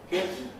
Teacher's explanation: And those are typical placements of the English short vowels I and kit, which is close-ish and frontish, but not I, not git, but kit, relaxed, laxed.